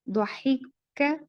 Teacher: یہاں پر قو نہیں بولیں گے اس کو, ضحک کا باریک ادا ہوگا